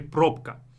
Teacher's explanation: This B has to change into a voiceless pair, okay? Because it comes before a voiceless consonant.